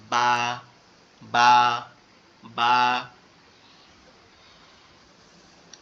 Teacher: দুই ঠোঁটের ভেজা অংশ, মানে দুই ঠোঁটের ভিতরের দিকে অংশ, এখান থেকে হালকা করে আওয়াজ হবে